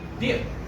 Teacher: in dip, the pe sound is not aspirated. But it's still voiceless. It's not aspirated. It's unreleased.